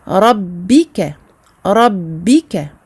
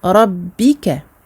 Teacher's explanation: le B, il s'agit de la fermeture des lèvres sans aucune pression. Rabbika. Et ce n'est pas parce que j'ai une shadda que je vais appuyer plus sur mes lèvres.